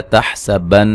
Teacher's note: نون مشدد پہ غنہ ضروری ہے